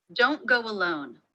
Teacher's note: Each of these words has the O as in no diphthong in American English.